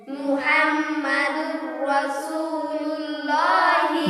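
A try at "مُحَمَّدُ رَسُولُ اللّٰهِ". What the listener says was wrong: মুহাম একটু গুন্না হবে, মুহাম্মাদুর রাসূলুল্লাহি,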